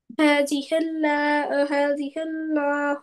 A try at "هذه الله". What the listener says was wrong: लाहु, लॉ नहीं है, ला है, ला। हादिहिल्लाहु, हादिहिल हादिहिल्लाहु